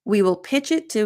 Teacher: Again, if our team completes the proposal on time, we will pitch it to. Now, because of the linking with pitch it, I find that I don't reduce to as much in this particular example.